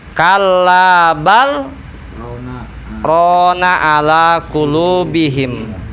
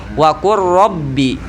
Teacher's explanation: Beda di sini, lam bertemu ro. Harus cara bacanya itu sakta, berhenti sejenak tanpa bernapas dengan niat membaca